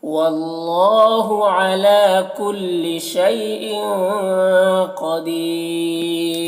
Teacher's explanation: ان کی تنوین میں اخفا ہو رہا ہے، اس کی آواز کو ناک میں چھپا کر پڑھیں گے۔ قدیر میں قاف کو پر پڑھیں گے اور دی میں یا مدہ ہے، ایک الف کے برابر کھینچیں گے۔ اور یہاں پر را وقف کی صورت میں یہ جو دو پیش کی تنوین ہے سکون سے بدل جائے گا.